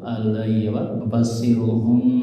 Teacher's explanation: Kurang tahan omnya, mim sukun bertemu ba ditahan dulu.